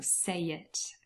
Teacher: between say and it there is intrusion and there's a y appearing.